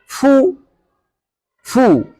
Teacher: Kalau dhammah, bibir monyong ke depan.